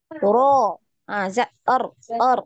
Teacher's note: Jadi sekali. Ya, sekali aja getarannya.